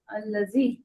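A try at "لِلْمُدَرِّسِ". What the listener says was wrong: नहीं, अल नहीं है, लिल मुदर्री, लिल मुदर्रिस, वो अलिफ है ना वो ड्रॉप कर देते हैं ऐसे टाइमों पे, लिल लगता है ना तो ड्रॉप कर देते हैं उसको जी।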